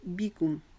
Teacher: با کے نیچے جو زیر ہے اس کو باریک ادا کریں گے